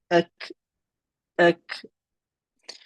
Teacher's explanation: you'll raise your tongue slightly forward from where kaf was, and hitting it, raising the tongue and hitting the hard palate. Ak, ak. So the kaf just more forward, still via the aqsa lisan, so still via the back of the tongue, and we'll raise it slightly, hitting the hard palate. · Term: makhraj of kaf